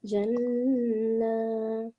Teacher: noon mushaddid, and we doing the nasal sound for 2 seconds